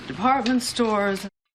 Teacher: Department store is a set phrase, stresses on department.